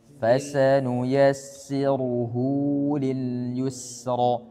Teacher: Hu-nya panjang 2 harakat.